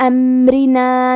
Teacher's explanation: کلمت امرنا میں را کے نیچے زیر ہے، تو یہاں را کا حکم ہے ترقیق، ہم حرف الرا کو پتلی آواز میں پڑھیں گے۔